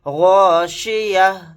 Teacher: آیت کرتے ہوئے سانس توڑتے ہوئے تا نہیں پڑھا جائے گا، تا کی جگہ ہا ساکن بنا کر پڑھیں گے